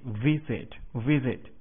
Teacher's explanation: 重音节在第一个音节